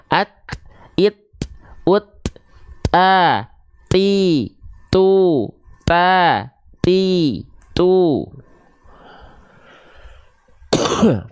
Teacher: huruf t Dia Hanya berupa percikan nafas tidak mengalir nafas maka perhatikan ketika melafazkan huruf tnya pastikan jangan mengalir nafasnya tapi · Bukan atnya dulu, dia berhenti dulu kan suaranya, baru keluar percikan nafasnya